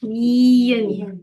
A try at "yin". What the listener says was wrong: I want a good old American Y. Okay. No Chinese Y's. Say yin.